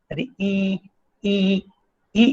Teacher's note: in the closed front position, you have the I symbol